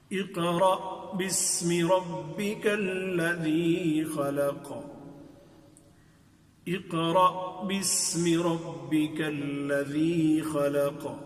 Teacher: قاف میں تو ہم نے قلقلہ کیا ہے، یعنی اس میں آدھی زبر کے برابر، اس ساکن میں آدھی زبر کے برابر حرکت دی ہے